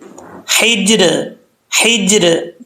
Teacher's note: जीम हरूफ कलकला में से, कलकला तो करेंगे लेकिन जीम को कलकला करते हुए ज़बर नहीं पढ़नी चाहिए